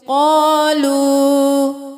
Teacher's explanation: واو مدہ ایک الف کے برابر کھینچیں